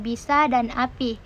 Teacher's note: vokal I kecil atau terbuka seperti pada kata bisa dan api